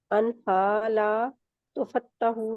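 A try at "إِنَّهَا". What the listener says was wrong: انہا، انہا، نون کے مخرج میں رہتے ہیں، ان نہیں ہے، ان نہیں ہے، ان ہا. آپ کی پیش بھی مجہول ہے، لا تو نہیں ہے، تو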